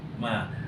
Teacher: Jadi kalau sekat tu sahaja ma tu mad asli nama dia. Nama dia mad asli dan wajib kena baca dua harakat.